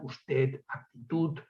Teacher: el ensordecimiento de la D final